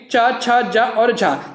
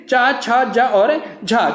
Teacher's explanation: वे व्यंजन वर्ण जिनके उच्चारण में कुछ घर्षण के साथ श्वास वायु बाहर निकलती है उन्हें क्या कहते हैं, स्पर्श संघर्षी व्यंजन कहते हैं।